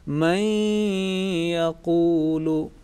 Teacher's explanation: long nasal sound, about 2 seconds